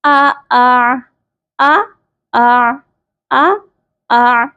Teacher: اس کے ہجے کریں گے، حمزہ زبر آ، حمزہ عین زبر آ، آ آ آ آ آ آ، یعنی کہ دوسرے والے حمزہ کو ڈائریکٹ عین کے ساتھ آپ نے ملا دینا ہے۔ اس کے حمزہ کی آواز کو تھوڑا سا آپ نے آسانی کے ساتھ ادا کرنا ہے، خوب واضح کر کے ادا نہیں کرنا۔